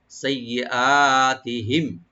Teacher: তো সিন open রাখবেন আর ইয়াটাকে মাঝখানে ডাবল করে পড়তে হবে, টানবেন না। সাইয়্যি হামজাকে এখানে ওপেন করে রাইট দিয়ে পড়বেন গলার শেষ থেকে। সাইয়্যাতিহিম তি বলবো আর মিম সাকিন এখানে জাহার করবো আমরা।